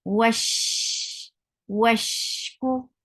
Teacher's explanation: the sound should spread when you will say sheen with sukoon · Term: tafashi